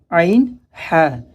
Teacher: عین، ہا حلق کے بیچ والے حصے سے